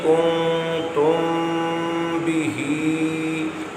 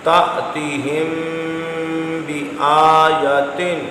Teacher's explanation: اب ایک لائن چھوڑ کے اگلی لائن پڑھ لیں، یعنی اخفاء شفوی پڑھیے، کنتم بہی، میم ساکن کے بعد با آیا، یہاں آپ نے اخفاء شفوی یعنی غنہ کیا ہے